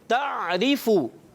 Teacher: تعریفو, تعریفو, عین کی ادائیگی کلیئر رکھنی ہے. را باریک, را کے نیچے زیر ہے